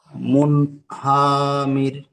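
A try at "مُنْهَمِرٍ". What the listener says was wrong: হা টান হয়ে যাচ্ছে ভাই, হারাকাত। মুনহামির।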